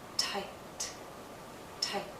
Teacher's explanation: I have this vowel sound, but because the T follows, it's shorter. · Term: vowel length